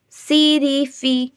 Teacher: سین میں سی ٹی کی آواز آئے گی